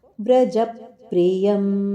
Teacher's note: ವ್ರಜಪ್ರಿಯಂ ಜದ ಮೇಲೆ ಆಘಾತವಿದೆ ಪಕಾರದ ಆಘಾತ ಕೊಟ್ಟು ಹೇಳಬೇಕು